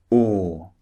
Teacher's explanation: The mouth and the lips are rounded. This is very important for producing this sound, the second sound.